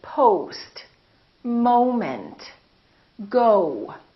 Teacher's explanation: So it's actually two sounds, it's O and U together. So you have to move your mouth from O to U